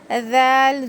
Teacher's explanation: زبان کی نوک اوپر کے دو دانتوں کے کنارے پہ لگانے سے ذال ادا ہوتا ہے